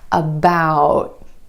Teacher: Instead of that true T at the end, most Americans are going to hold that T, about. My tongue tip goes to the ridge behind my teeth and just stays there. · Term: held T